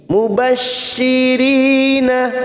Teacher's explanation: Mubashirina, ri kasrah bertemu ya sukun 2 harokat kita panjangkan